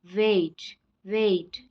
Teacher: वेट, वेट यहाँ पे ए और आई का साउंड आ रहा है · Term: डिप्थोंग्स